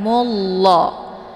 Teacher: [Musik] yangun kemudian Mullah ini merupakan lafzul jalalah tafimun mufakamun yaitu lafaz Allah yang mesti dibaca tebal karena sebelum lafaz Allah berharakat zumah